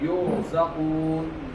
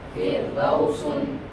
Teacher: را ساکن سے پہلے زیر تو را باریک